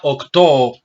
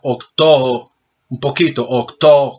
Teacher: Lo que pasa es que es muy sutil la diferencia. Lo importante es que trate de reducir la omicron y trate de alargar un poquito la omega.